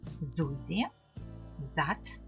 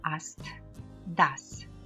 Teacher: буква С перед голосними читається дзвінко з перед приголосними в кінці слова глухо с Зузі зат Аст дас дзвінки приголосні в кінцеслова або складу оглушуються